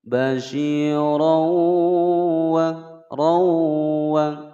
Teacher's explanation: ada fathatain bertemu dengan huruf wawu. Hukum bacaan idgham bi gunnah, dimasukkan dan didengungkan selama 2 ketukan